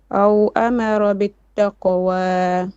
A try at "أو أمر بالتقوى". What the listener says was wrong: Make your ra more heavy. أو أمر بالتقوى.